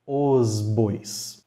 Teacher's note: a gente tem o artigo masculino no plural os antes de um B ele vai ser pronunciado com o som de z